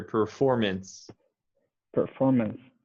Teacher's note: i'm not hearing you make the s sound at the end try to make that a little stronger